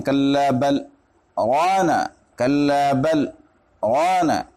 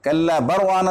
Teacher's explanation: اس میں سکتہ ہوگا، سکتہ بھی ہوگا اور اظہار بھی ہوگا